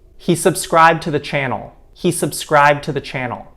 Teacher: now we have deleted d this tends to happen in front of a consonant